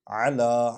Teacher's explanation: عین کا جو مخرج ہے وہ اقصی حلق سے یہ نکلتا ہے، درمیان سے حرف حلقی ہے، اس لیے اس کو ظاہر کریں گے۔